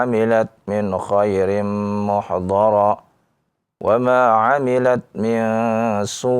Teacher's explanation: Jika kita wakaf di situ, kita tekan hamzah di akhirnya ya. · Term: nab